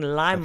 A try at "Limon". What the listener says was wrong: Limon. That's not, it's Limon. They're trying to say it like it's French, but limon is Spanish. And they're not saying the li, they're saying the la, like it's French. It's limon.